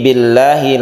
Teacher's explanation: lafadz Allahnya ini tarqiq atau tipis karena sebelumnya ada kasrah